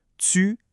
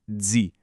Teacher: On dirait qu'il y a un petit « s » ou un « z » qui s'ajoute, une petite friction. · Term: l'affrication